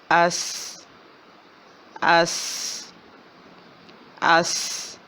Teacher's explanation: سیٹی کی آواز ہے، سیدھی آواز ہے اور باریک ہے۔